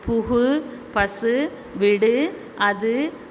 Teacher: ஓசை குறையாமல் ஒரு மாத்திரை அளவில் முழுமை முழுமையாக ஒலிப்பதை முற்றியல் உகரம் என்கிறோம்